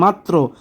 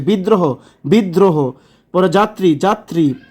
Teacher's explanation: শব্দের মধ্যে বা শেষে কোনো ব্যঞ্জনের সঙ্গে র ফলা থাকলে দ্বিত্ব সহ র ফলা উচ্চারিত হয়, দ্বিত্ব সহ র ফলা উচ্চারিত, যেমন মাত্র এখানে তয়ের সাথে র ফলা যুক্ত এই জন্য মাত্র দ্বিত্ব সহ উচ্চারণ হয়েছে।